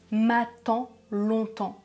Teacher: m'attends longtemps c'est le son [ã] qui rime